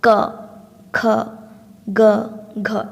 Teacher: ସେହିପରି କଣ୍ଠ୍ୟ କ, ଖ, ଗ, ଘ, ଏ ହେଉଛି ଆପଣଙ୍କର କଣ୍ଠରୁ ବାହାରେ, କଣ୍ଠକୁ ସ୍ପର୍ଶ କରି କ'ଣ ବାହାରେ, ସେ ଯେଉଁ ଫୁସ୍ଫୁସ୍ରୁ ବାୟୁଟା ବାହାରେ କଣ୍ଠକୁ ସ୍ପର୍ଶ କରି ବାହାରେ, ତେଣୁ ଏ ହେଉଛି କଣ୍ଠ୍ୟ ସ୍ପର୍ଶ ବ୍ୟଞ୍ଜନ ଧ୍ୱନି।